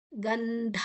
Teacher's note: ಗಂಧ ಅಲ್ಲಿ ಗಂ ಅಲ್ಲ ಗನ್ ಅಲ್ಲಿ ನ ತರ ಮುಂದಿನ ಅಕ್ಷರ ದ ಇದೆ